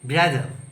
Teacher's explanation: letter R ഒരു വേർഡിന്റെ അവസാനം വരുമ്പോൾ എന്ത് ചെയ്യാൻ പാടില്ല ഉച്ചരിക്കാൻ പാടില്ല